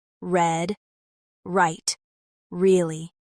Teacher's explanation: the R sound is made by pulling your tongue back slightly, without touching the roof of your mouth, and rounding your lips